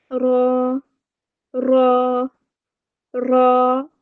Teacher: زبان کی نوک اور اس کی پشت جو ہے وہ بالمقابل تالو کو لگے تو را ادا ہوتا ہے